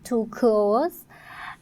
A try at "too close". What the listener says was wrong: That L again, too close. Problems with the word when we had that earlier with the wider.